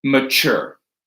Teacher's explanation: That tu is the stressed syllable, but we say that with a ch.